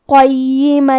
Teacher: کلمت قیمن میں قاف کی ادائیگی زبان کے جڑ اور تالوں کے نرم حصے سے ہے. قاف حروف التفخیم میں سے بھی ہے، تو ہم یہ حرف کو موٹی آواز میں پڑھیں گے. حرف الیا پہ تشدید ہے، لہذا ہمیں 2 حرف کے برابر یا کو پڑھنا ہے. · لام حروف الادغام بغیر غنہ میں سے ہے، اور ادغام کا معنی ہے حرف کو حرف میں داخل کرنا، تو ہم یہ تنوین کو لام میں ملا کے بغیر غنہ سے لیکن تشدید کے ساتھ یہ حکم کو ادا کریں گے